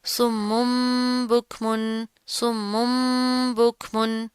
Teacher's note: ہم با کو میم سے تبدیل کر کے پڑھ دیتے ہیں ، اس میم کو ہم ان دونوں کو ہم ایک میم